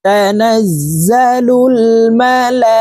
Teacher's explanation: লামে 4 আলিফ টান হবে, কারণ মদের হরফের উপরে মোটা চিহ্ন, বামে হামজা, মধ্যে মুত্তাসিল 4 আলিফ টানিয়া পড়িতে হয়, এই কারণে এই লামকে 4 আলিফ টানে পড়বো।